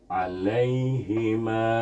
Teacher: Ma itu kena baca panjang empat atau lima harakat dengan hukum Mad Jaiz